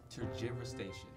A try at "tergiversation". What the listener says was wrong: So you were right in everything except for the G.